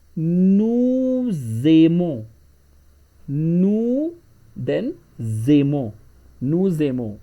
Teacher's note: whenever the first word is finished with a consonant, which is s here, and the next word starts with a vowel, then we pronounce both words together